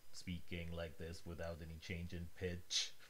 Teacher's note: an intonation from like an old sci-fi robot is very flat speaking like this without any change in pitch